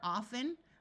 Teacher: in some parts of the US the t is pronounced